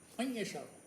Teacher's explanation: ناک سے آواز نکالتے ہیں، من یشاء، یہ آواز منہ سے نہیں نکل رہی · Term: غنہ